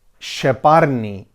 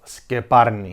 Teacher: Cypriots really love using the sh sound, i.e. sheparni instead of skeparni.